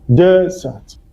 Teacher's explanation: The one with one S is pronounced as desert. The stress is on the first syllable, desert.